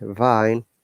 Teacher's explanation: When you're pronouncing V, you can feel that our vocal cord is vibrating and two of our lips are touching each other.